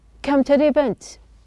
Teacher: the T is pronounced as a flap. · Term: flapped sound